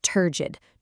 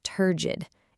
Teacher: Turgid, 2 syllables, emphasis on the first.